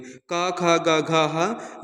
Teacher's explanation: का, खा, गा, घा, हा, ये कंठ है